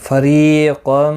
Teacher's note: را زیر کی وجہ سے باریک پڑھا جائے گا. ری یا مدہ ہے اور تنوین کے بعد حرف یرملون کا میم آئے، ادغام مع الغنہ ہوگا، گنہ کے ساتھ پڑھیں گے. · قاف مستعلیہ ہے، پر پڑھا جائے گا